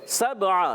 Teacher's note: سین کو سیٹی سے ادا کریں گے